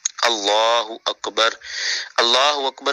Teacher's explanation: جو اللہ کا درمیان والا لام ہے اس کے اوپر کھڑی زبر ہے، اس کو ہمیشہ پور اور موٹا پڑھتے ہیں